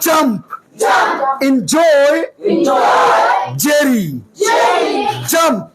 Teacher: ফাইন, ফাইভ, ফ্যাক্টস, ফিলোসফি, জি, জি, আই, জেই, জেই, যে না, বলো জেই, শক্ত করে জেই। জিহ্বার মধ্যভাগ উপরের তালুতে লাগবে